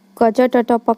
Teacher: ये एक मुख के एक अंग से दूसरे अंग के टकराने के बाद निकलती है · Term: स्पर्श व्यंजन